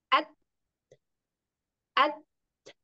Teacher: kuat dulu tekan baru keluarkan lepas maka akan ada angin ada sedikit angin